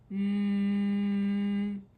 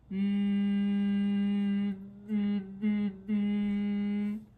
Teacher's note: All right, we have s, ooh, mm. The sound is actually coming out of our nose. It's what we call a nasal sound.